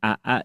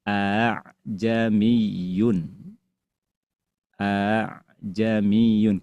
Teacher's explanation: hamzah yang kedua dibaca tashil melemah